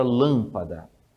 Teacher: estas palavras elas são acentuadas não na última não na penúltima e sim na anti penúltima sílaba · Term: proparoxítonas